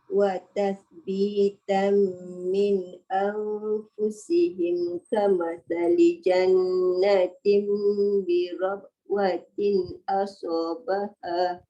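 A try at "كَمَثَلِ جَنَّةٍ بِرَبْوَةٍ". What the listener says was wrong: Qalqalah tu kena jelas.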